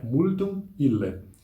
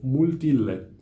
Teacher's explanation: as vogais nasais também são elididas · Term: elisão